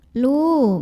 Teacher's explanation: Karena ada waw sukun yang didahului baris dhammah. Maka cara bacanya lam yang berbaris dhammah ini kita panjangkan dua harokat sama seperti huruf qaf.